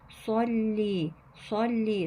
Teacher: sad kalın. Lam harfimiz ince. İnce bir geçiş yapıyoruz.